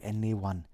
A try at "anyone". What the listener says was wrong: I feel like you put more emphasis on the anyone, like anyone.